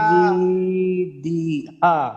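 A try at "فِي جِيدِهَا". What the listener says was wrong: হাতে টান আছে কিন্তু আপনি আবার হাতে টান দিবেন।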